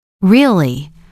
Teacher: Falling tone shows confirmation or seriousness.